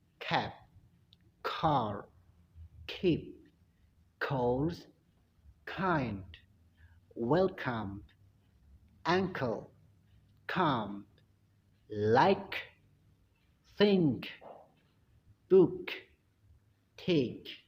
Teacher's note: Ya, meskipun ada di tengah huruf K, tetap diplosifkan atau diletupkan, diledakkan.